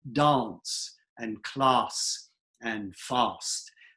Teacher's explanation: They're words that in most American dialects we say with an a sound, like fast and class and dance. Now, in Standard British, those words get said with an ah sound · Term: ask words